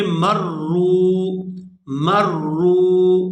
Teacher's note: میم را زبر مر، را واو پیش رو، مرو۔ یہاں جو را ہے یہ مشدد ہے، اس کے اوپر شد ہے، یہ 2 دفعہ پڑھی جائے گی۔ ایک دفعہ اس میم کے اوپر جو زبر ہے اس کے ساتھ پڑھی جائے گی اور دوسری دفعہ یہ را جو ہے اس کے اوپر پیش ہے، یہ واو ساکن کے ساتھ ملے گی۔